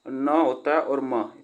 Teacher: यह होते हैं अनुनासिक व्यंजन, जो कि यह वर्ग का पांचवा व्यंजन होते हैं, पांचवा अक्षर होते हैं।